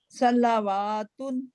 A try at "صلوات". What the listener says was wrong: نہیں واو نہیں پڑھا جائے گا، لام پہ الف صغیرہ ہے اسی کو پڑھیں گے صلاتن